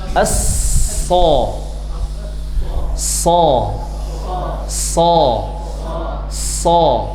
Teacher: Ujung lidah di antara gigi atas, gigi bawah lebih cenderung ke bawah. Dia bertempel dengan gigi bawah. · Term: huruf shad